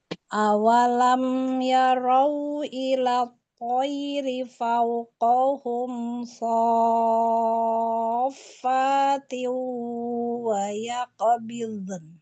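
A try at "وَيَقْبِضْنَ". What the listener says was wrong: Wa yaqo qalqalah qafnya tebalkan. Wa yaqbidun. Bidun. Bidun. Bid. Istitolahnya. Bidun. Bid. Jangan ada suara ini ya, karena dot itu dia kan punya sifat syiddah ya. Wa yaqbidun rokhwa afwan. Wa yaqbidun. Bidun. Ya, bidun.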